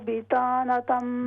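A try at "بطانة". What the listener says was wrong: बिता को full mouth से बितानतम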